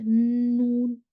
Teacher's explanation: आवाज ये आपको नेजल कैविटी से फ्लोट होती भी बाहर आती है। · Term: गुन्ना